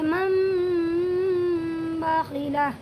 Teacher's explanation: ناک میں لے جا کر غنہ اور اخفا کے ساتھ اس کی آواز کو ادا کریں گے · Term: اقلاب